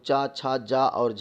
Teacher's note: स्पर्श संघर्षी भैया आपका जो आता है वो चा, छा, जा और झा है